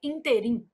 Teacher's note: a palavra ínterim apresenta erro de prosódia quando pronunciada como oxítona, que aí a pronúncia seria interim.